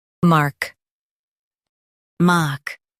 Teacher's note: Stress mark with a long A sound.